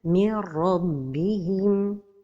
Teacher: In the case of إدغام of نون ساكنة with the letter ra is a complete إدغام, so the letter ra has شدة. And the إدغام is without غنة